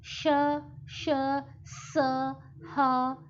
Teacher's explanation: इन व्यंजनों के उच्चारण के समय वायु मुख से रगड़ खाकर बाहर निकलती है और जब उसमें रगड़ पैदा होती है घर्षण पैदा होता है तो ऊर्जा यानी ऊष्मा यानी गर्मी पैदा होती है और उच्चारण के समय मुख से गर्म हवा बाहर निकलती है। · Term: ऊष्म व्यंजन